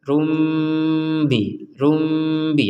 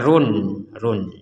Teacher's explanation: kita membacanya Rum karena bertemu dengan huruf ba dan diperkuat dengan huruf mim sehingga kita harus membacanya rumbi rumbi ada dengungnya ada dengungannya untuk